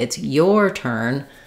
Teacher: Turn is the important word in this phrase, and it's your needs to go by quickly.